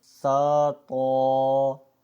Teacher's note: تو کی ادائیگی کے وقت بھی ہم نے نیچے کے نہ ہی ہونٹ کو ہلایا ہے اور نہ ہی ہم نے اس کو گول کیا ہے